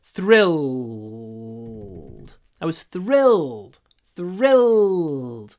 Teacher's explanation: It's a dark L that we pronounce in the throat.